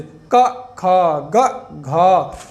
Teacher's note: का वर्ग के जितने भी वर्ण होंगे सब आपके कंठ से, का, खा, ग, घा, तो इसका उच्चारण स्थान आपके इस कंठ से होता है।